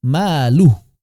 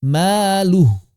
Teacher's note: Walaupun panjang ketika wasol. Tapi ketika wakaf tetap maluh. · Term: mad silah